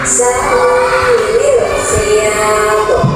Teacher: Itu huruf ta-nya memantul juga. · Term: qalqalah